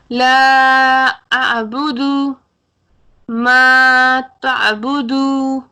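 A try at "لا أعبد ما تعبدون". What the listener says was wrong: نہیں، آخر میں نون کی آواز بھی سنائیں گے. تعبدون.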